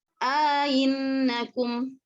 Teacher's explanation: hamzah kedua dibaca agak diayun, ya, bunyi antara hamzah dengan huruf alif dengan idgham, artinya ada mat. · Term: tasil